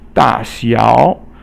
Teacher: da is fourth tone and 小 is third tone